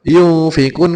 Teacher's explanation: semula n atau nun sukun diganti dengan ng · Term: ikhfa